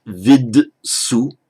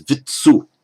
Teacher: By Sandhi, you can't have vid su. The d has to change, the voiced d has to change to an unvoiced t. So it becomes vitsu.